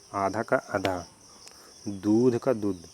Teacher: ठीक है, यहाँ ध जो है महाप्राण ध्वनि है, द जो है अल्प प्राण है, तो ध का द हो जा रहा है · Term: अल्प प्राणीकरण